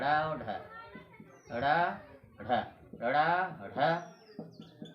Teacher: ड़ ढ, ड़ ढ का उच्चारण करते समय लिख लीजिए, ड़ ढ का उच्चारण करते समय जिह्वा ऊपर उठकर, जिह्वा ऊपर उठकर झटके के साथ नीचे आती है। झटके के साथ नीचे आती है। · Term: उत्क्षिप्त व्यंजन